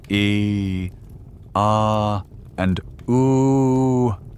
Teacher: These three sounds are what phoneticians call quantal vowels. They are acoustically as different from one another as possible, occupying the extreme corners of the human vowel space.